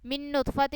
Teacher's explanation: من نطفت ان میں جو ہے نون مشدد ہے، اس لیے ہم نے اس کو یہاں پہ غنہ کر کے پڑھا